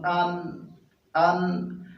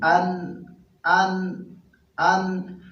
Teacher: محترمو نون دا د را د مخرج په شان دی او د لام د مخرج په شان دی، یعنی د ژبې د سر او د مخامخ غاښونو د ورو نه ادا کېږي. نون خو صرف دا دی چې په دې کې به مونږ شونډې ګول کوو.